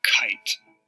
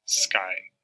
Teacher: it comes out with a puff of air in the word kite but not in the sky these two sounds are different but we hear them as variants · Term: allophones of the phoneme k